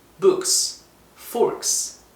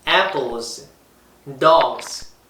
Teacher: 그 결과 명사의 끝소리가 book과 fork와 같이 이 발음소리는 무성음으로 끝나면 기존의 같은 발음소리인 무성음 스 소리를 붙여 books, forks 라고 그냥 기존의 규칙을 따랐던 반면 단어의 끝소리가 apple, dog 이거와 같이 진동소리인 유성음으로 끝나면 무성음 스 소리의 유성음 버전인 z라고 발음을 달리한 거죠. apples, dogs 라고 한 것처럼 말이죠.